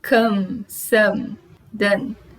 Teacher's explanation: Todas elas têm um som nasal depois do O.